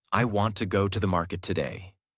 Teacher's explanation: Want, go, market are strong. Other words become lighter and faster.